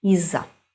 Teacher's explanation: Again, we do not pronounce it as two different words. We pronounce as one word, but z is a little bit longer.